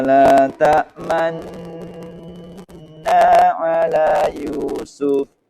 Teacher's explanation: Di tengah-tengah dengung bibir harus mencucu sebagai isyarat dhammah. Ismam bisa dibaca dua wajah, dengan ismam atau dengan kalimat aslinya.